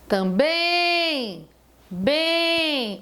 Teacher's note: a tônica do também é uma tônica nasal, porque o em, ele é a vogal com som nasal.